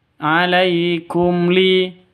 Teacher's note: mim mati bertemu dengan lam jelas terang karena izhar syafawi